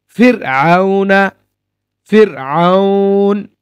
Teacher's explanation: র সাকিনের পূর্বে যদি স্থায়ী জের আসে, স্থায়ী, তাহলে র বারিক বারিক হয়। ফির আউনা, ফির আউন, র বারিক।